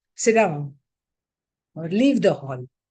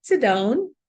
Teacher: There is the fall at the end of the sentence.